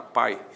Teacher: Na palavra pai existe um ditongo. O a é vogal, o I é semivogal, ditongo decrescente